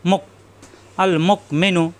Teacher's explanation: হামজায় সাকিন শক্ত হবে, গলার ভিতরে আটকে যাবে